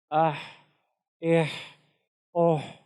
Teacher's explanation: حا کے اندر بھی صفت حمز ہے، تو اس میں بھی ہماری جو سانس ہے وہ جاری رہے گی